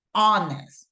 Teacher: Remember, even though we have the H, it's silent, right? No pronunciation.